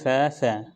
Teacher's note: आपका जो गला होगा उसमें कहीं पर भी आपको कंपन नहीं महसूस होगी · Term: अघोष